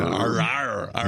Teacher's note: Make sure you really drop those American R's.